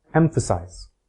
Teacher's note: stress is quiet low and short for example the word emphasize the first syllable has primary stress the second has zero stress and the third has secondary stress